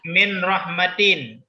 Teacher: Ada nun sukun bertemu dengan ra. Itu idgham bila gunnah. Ya, tidak dibaca, tidak ada dengung.